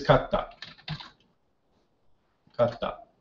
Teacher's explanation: you kind of hold that consonant down for just a split second longer to change the sound. And if you know what the character tsu is, you're going to have a little tsu in between the kata. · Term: gemination